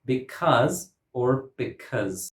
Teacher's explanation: In this word, because, Cause has a schwa, but it is stressed.